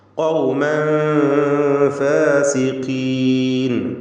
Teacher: ഖൗമൻ ഖാഫിന് പൂർണ്ണമായ തഫ്ഖീം കൊടുക്കുക, ഇസ്തിഅലാന്റെ ഹർഫാണ്. തൻവീനും ശേഷം ഫാഉമാണ്, ഇഖ്ഫാ ഹഖീഖി നൽകി മറച്ചു മണിക്കണം.